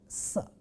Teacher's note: the first member of the cluster can only be sa, a dental or alveolar fricative